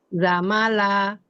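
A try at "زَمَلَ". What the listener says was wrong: Jelaskan lagi zainya karakternya. Coba Ibu bacakan sin ya. Kurang sofir, kurang tajam suara zainya ya, kurang berkarakter.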